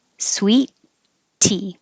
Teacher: You don't make two T's. You hold your tongue for the first T.